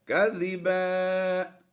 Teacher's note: ممن افترا علی اللہ کذبا. دو زبر کی تنوین کو ہم نے الف مدہ سے بدل دیا ہے. کذبا وَإِذِ واو زبر وا حمزہ زیر ای وا ای زال عین زیر زیر، یہ الف جو ہے یہ سائلنٹ ہو جائے گا.